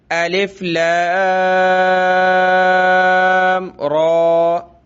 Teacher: یہ را کے اوپر کھڑا زبر ہے تو مد کو زیادہ کھینچا جاتا ہے. را یہ کھڑا زبر کو 1 الف کی مقدار میں کھینچا جاتا ہے, اس لیے اس کو کم کھینچیں گے, لام کو زیادہ کھینچیں گے